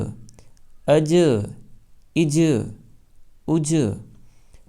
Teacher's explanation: حمزہ جیم زبر اج، تو جیم چونکہ قلقلہ کے اکشروں میں سے ہے اس لیے زبان مخرج پر لگ کر اچھل جائے گی